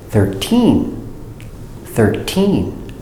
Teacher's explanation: With 13, we have T-E-T, teen, 13. And the stress and accent is on the second syllable.